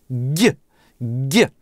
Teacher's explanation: язык вжат в небо до упора, так что дышать не можем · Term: Стоп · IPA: [ɟ] [gʲ]